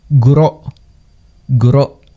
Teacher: Nota el pausa glotal en el fin sílaba.